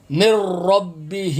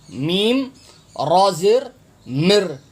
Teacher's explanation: را کے اوپر تشدید ہے، اس لیے نون ساکن ہو جائے گا، نون آپ نے نہیں پڑھنا